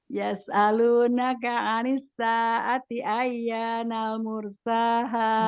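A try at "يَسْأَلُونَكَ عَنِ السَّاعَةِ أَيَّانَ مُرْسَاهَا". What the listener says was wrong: Enggak pakai nal. Ayyana mursaha.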